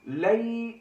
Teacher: یا سے پہلے زبر آ گئی ہے، یا لین ہو رہی ہے، تھوڑا سا کھینچ کر پڑھیں گے، مدہ سے اس کی مقدار تقریباً ملتی جلتی ہے، ٹھیک ہے۔